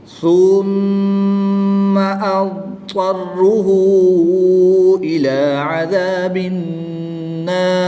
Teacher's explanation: یاد رہے اس لفظ میں ضاد یا طا کو ملانا نہیں ہے، یہ اب علیحدہ ہے، طرہ علیحدہ ہے، اس لیے اس کو الگ الگ پڑھیں گے۔